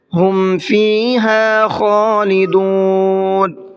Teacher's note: خا کو منہ بھر کے پڑھنا ہے